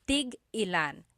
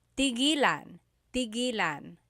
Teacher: when there's a hyphen in it, you have to have that glottal stop